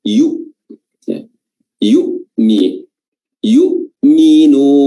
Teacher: Yu'minun huruf ya, yu, dan disudahi dengan hamzah qata', ya, hamzah yang sukun dan dia harus dilafazkan dengan qat'i, yaitu sukunnya itu harus atau hurufnya harus berasal dari makhraj huruf hamzah sendiri, yaitu di aqsal halq, ya, tenggorokan terjauh dalam bahasa Arabnya, atau dalam artian kita tenggorokan bagian bawah.